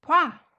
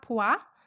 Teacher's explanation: when o and a are combined, they shorten to wa vowel.